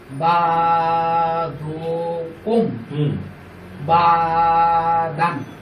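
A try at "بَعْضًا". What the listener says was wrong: বা দান একটু বা দন হবে। দনের মধ্যে কি হয়? বা জবর দনের মধ্যে কি হয়? দ। হ্যাঁ, ওই যে 8টা হরফ এমন আছে না যেটার মধ্যে জবর দিলেও জবর উচ্চারণ হয় না। হ্যাঁ, তার মধ্যে একটা হরফ কি? দদ। দদের উপর জবর দিলে হয় দ, আর দদের উপর 2 জবর দিলে দন।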